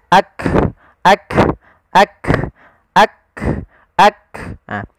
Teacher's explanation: huruf Kaf yang perlu kita bunyikan dulu yang siddahnya yaitu kita tahan suaranya baru kita alirkan nafasnya